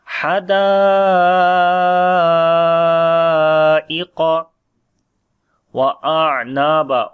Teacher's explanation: On the ain we make tawassut quality, little continue. Wa Naba, noon we long due to alif madda, and when we stop on this place, so this becomes also alif madda.